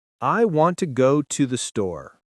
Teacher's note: Notice how we stress want, go, and store. The small words to, and the are weak.